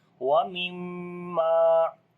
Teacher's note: Wa mimma. On the mim there is shadda sign, we make gunna, and also we long due to alif madda